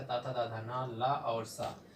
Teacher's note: तवर्ग के पांचों अक्षर ता था दाधा न ला और सा, इनका उच्चारण स्थान होता है दंत